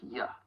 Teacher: And I'm talking about the words you and to. So when unstressed, you may sound more like ya, and to may sound more like ta. And you hear that schwa sound.